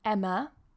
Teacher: A lot of people say my name like Emma with a very open ah, but actually in English it's with a schwa